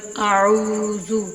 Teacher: الف مدہ اور واو مدہ، ان کو ایک الف کے برابر تھوڑا سا لمبا کر کے بھی پڑھتے ہیں